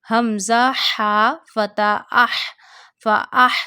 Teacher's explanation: we read this ha from the middle of our throat.